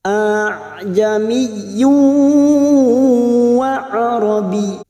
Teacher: ini adalah bacaan tashil, artinya meringankan bunyi hamzah yang kedua, maka bunyinya a'jamiyyu wa arabi.